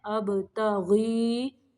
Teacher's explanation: اب با کو قلقلہ کرنا ہے